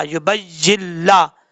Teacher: जब या को लाम से कनेक्ट करेंगे तो यहाँ पर नून को पढ़ने की जरूरत नहीं है, नून को छोड़ देंगे